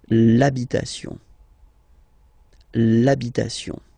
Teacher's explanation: Even if you've got this h, then the first sound you hear is a. Okay, so for the same reason you will have to take this a away, and then you get this l'habitation.